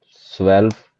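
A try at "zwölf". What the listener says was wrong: जो तुमने स्वेल्फ कहा है, ये ओ कहाँ गया, स्वेल्फ।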